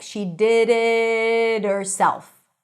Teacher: The T sounds like a light D.